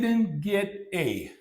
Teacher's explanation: so T is eliminated it's dropped